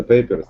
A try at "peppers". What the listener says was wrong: Pepper. Это перец. Pepper. Это не paper, это не бумага.